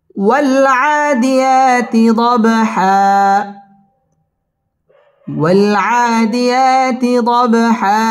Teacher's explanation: ওয়াল আদিয়া মধ্যে তবাই একালিফ টেনে পড়তে হবে। দব বা কলকলার হরফ ধাক্কা দিয়ে পড়তে হবে। দব হা দুই জবরে বামে ওয়াকফ হইলে একালিফ টান দিয়ে পড়তে হয়।